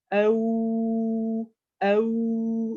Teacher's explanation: la langue, elle recule, les lèvres, elles avancent. Et là, le son, il passe tout par la bouche. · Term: waw